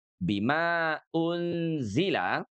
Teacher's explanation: Pada saat kita membaca bima unzila, di sini ada tanda panjang ya, ma ketemu dengan hamzah pada kata unzila. Tanda panjang bertemu dengan hamzah, oke, itu menyebabkan bacaan kita menjadi panjang 4 harokat, boleh juga 5 harokat. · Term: mad jaiz munfasil